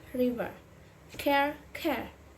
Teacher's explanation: However, it is softer and less pronounced. Your voice drops a little bit, almost sounding like an U at the end of the word.